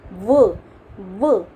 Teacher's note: दंतोष्ठे क्या होता है, दांत और होठ, इसमें उच्चारित करते समय व का उच्चारण स्थान है ये व आपकी जो दांत होंगे वो होठों को स्पर्श करेंगे, तो ये दंतोष्ठे हो गया।